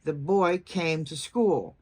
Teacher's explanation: So if you're saying the boy came to school, you'd emphasize boy, came, and school.